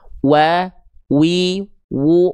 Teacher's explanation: Asyafatain artinya kedua bibir. Nah, jadi huruf waw itu dilafalkan dari kedua bibir, dilafalkan dengan posisi maju seperti kita mengucapkan huruf u